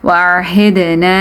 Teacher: dal qalqala, you have to do qalqala here, you have to do a bouncing sound.